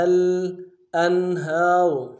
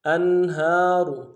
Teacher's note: حمزہ کو نون ساکن کے ساتھ ملانا ہے، اظہار ہوگا